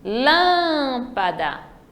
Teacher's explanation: já no lâmpada é a antepenúltima terceira sílaba Então ela é uma proparoxítona